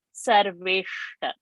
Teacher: the shra is a murdhani shra. So the tongue has to touch the roof of the palate and you should say Sarveshta and not Sarveshta.